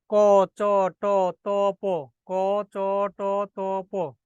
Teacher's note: মহাপ্রাণ অল্পপ্রাণ আর হচ্ছে মহাপ্রাণ এই যে প্রথম যে রাশি আছে ক চ ট ত প এগুলো উচ্চারণ করার সময় বাতাস খুব একটা লাগান না এই যে আপনার হাতটা সামনে নেন নিয়ে উচ্চারণ করেন ক চ